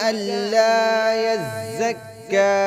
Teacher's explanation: ذات اور کاف دونوں کو سختی سے پڑھیں گے